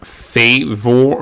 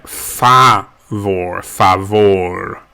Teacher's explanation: the a is pronounced more like an ah rather than an a